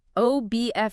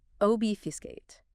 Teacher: 3 syllables, stress on the first.